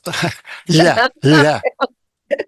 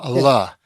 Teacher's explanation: it's a modifier on the lamed. And it changes it to a palatalized lamed